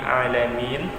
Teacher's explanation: Di situ ada huruf nun. Jadi huruf nun ini dia harus dibaca, tidak boleh terputus nun di ujungnya